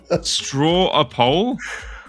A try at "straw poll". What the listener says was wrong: No, not a. There's no a in straw